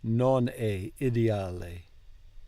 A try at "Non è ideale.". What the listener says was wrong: Good, but careful not to pronounce 2 L's on the end there. Ideale. No, we want to say ideale. Non è ideale.